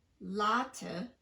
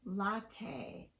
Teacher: tapped so for instance we don't say latte we say latte with both vowels getting in equal duration even though the first vowel is still in the stressed syllable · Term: true T